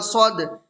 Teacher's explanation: صاد دال زبر صد، دال حروف قلقلہ میں سے ہے، دال کے اوپر جزم ہے تو اس میں قلقلہ ہوگا